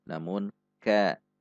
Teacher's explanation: Ka, perhatikan sifat dan makhraj huruf kaf. Meskipun ada dorongan udara saat mengucapkannya, namun tidak diucapkan dengan terlalu mendorong ka.